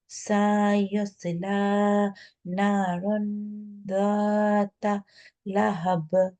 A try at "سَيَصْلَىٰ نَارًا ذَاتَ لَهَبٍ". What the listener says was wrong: সাথে টান হয়ে গেছে সাইয়াসলা সাইয়াসলা